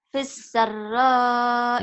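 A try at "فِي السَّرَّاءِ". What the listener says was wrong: I-nya nggak usah dibaca kalau di Iqra 5 karena kita harus menghentikan bacaan. Fissarro. Jadi kalau baca Quran begitu. Ujungnya nggak dibaca. Kalau Iqra 1 sampai 4 memang dibaca apa adanya.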